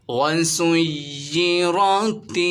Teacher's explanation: را پر زبر ہے، اسے موٹا پڑھیں گے